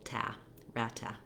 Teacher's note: use more of a clear vowel and a true t in your second syllable